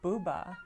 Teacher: So when you say the word booba, your lips are rounded, your oral cavity is very open